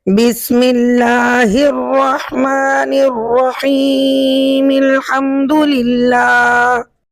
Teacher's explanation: آپ نے بسم اللہ کے آخر میں میم کو ساکن نہیں کیا، میم کی حرکت کو پڑھا ہے، تو یہاں پر تو مد ہو ہی نہیں سکتی یہاں پر، کیونکہ مد کا کوئی سبب نہیں ہے.